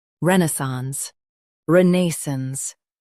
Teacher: Stress ren and keep sance light.